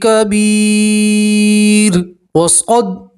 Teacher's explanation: تنوین کی آواز کو ناک میں چھپائیں گے اور ایک الف کے برابر گنہ بھی کریں گے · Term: تنوین کا اخفا